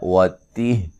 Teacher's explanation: وقف کی صورت میں ہا ساکن ہو جائے گی